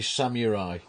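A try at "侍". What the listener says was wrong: Samurai. No, it's Samurai. You do not pronounce the U.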